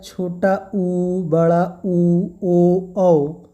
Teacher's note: जिनके उच्चारण में होठ की आकृति वृत्त के समान बनती है, जैसे बोला जाए छोटा ऊ, बड़ा ऊ, ओ, औ। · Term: वृत्ताकार स्वर